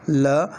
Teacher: जब ल का उच्चारण करते हैं तब वायु जो है वो जिह्वा के दोनों पार्श्वों से होकर गुजरती हुई बाहर निकल जाती है। उच्चारण करके देखिए, ल जब उच्चारण करा तो वायु दोनों पार्श्वों को स्पर्श करते हुए बाहर निकल गई, इसलिए ल एक पार्श्विक वर्ण है।